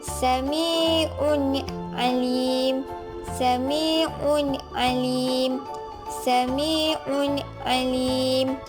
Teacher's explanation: apabila tanwin dua baris di hadapan bertemu dengan huruf Ain, maka ia dibaca jelas